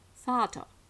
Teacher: in Vater spricht man weder einen R-Laut noch irgendetwas, das auch nur entfernt mit einem E-Laut verwandt ist, sondern einen gemurmelten A-Laut, das sogenannte Tiefschwa.